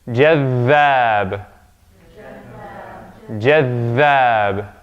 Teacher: It's not jadhab, not just jadhab, but we stay. The dhaal gets doubled. We stay on that one.